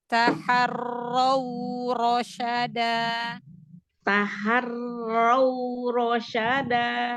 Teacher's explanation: Kan ro-nya dibaca tafhim, jadi bukan raw, bukan ra. Ya, ro. Iya.